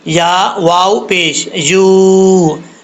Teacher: یا مدہ ہے، ایک الف کی مقدار اس کو لمبا کر کے پڑھا جائے گا